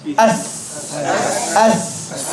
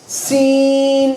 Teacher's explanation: Tongue is flat and the tip is behind the bottom teeth.